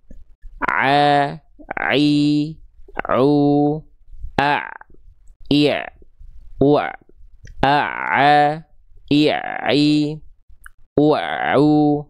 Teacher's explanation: Nanti dia akan katup epiglotis ini akan menyempit ke arah dinding tenggorokan dan membuat huruf ain keluar darinya